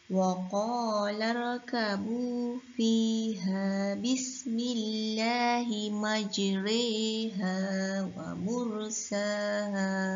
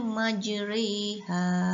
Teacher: bunyi pertengahan antara bunyi fathah dengan bunyi kasrah. Maksudnya tak juga dibaca atas huruf berbaris atas, dan juga tidak dibacakan tanda berbaris bawah. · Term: imalah